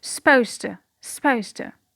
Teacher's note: The first process is the vowel elision of the schwa at the beginning of the word, at the unstressed syllable at the beginning of the word. So we omit the schwa. · We have omitted the d from the consonant cluster z, d, t at word boundaries. We omitted the d, it becomes supposed. When we have omitted the t, another process will occur, which is regressive assimilation. So the z will become s because we have t. Before t, the z is pronounced s.